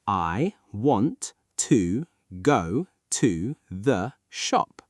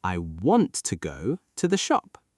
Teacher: The words want, go, and shop are strong.